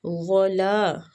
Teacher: وہ پہ ہونٹوں کو گول کریں گے، لام کو کھینچیں گے، الف مد ہو رہی ہے